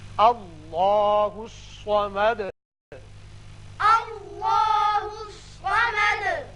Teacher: اب دال کے اوپر پیش ہے، آیت ختم ہونے کی وجہ ساکن کریں گے اور سکون کی وجہ سے صفت قلقلہ ادا ہوگی